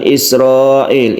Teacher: mad wajib muttasil di mana cara membacanya kita baca 2 Seteng Alif